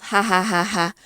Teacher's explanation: you find nasality in posed laughter